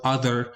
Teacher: with a voiced, this time, interdental fricative sound